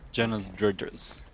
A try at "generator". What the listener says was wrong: Now, I hate to break it to you, but I don't think that's how you say a generator. Gender-a-raider. There's no S. There's literally no S except for at the end.